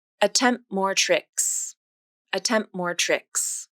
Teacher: In the phrase, attempt more tricks, the consonants M, P, T, and M line up next to each other in connected speech. Native speakers will typically drop the T in attempt, which makes this phrase sound like attempt more tricks, attempt more tricks.